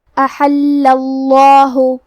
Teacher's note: آخری میں لام پہ تشدید ہے تو ہمیں تشدید کو ظاہر کرنا ہے. کیونکہ تشدید زبر کا ہے لہذا ہمیں لفظ الجلالہ مطلب کلمت اللہ کے لام کو موٹی آواز میں پڑھنا ہے.